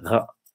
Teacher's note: And the rest of the country, the Southwest, Bergen, Stavanger, Kristiansand, they pronounce it back like the French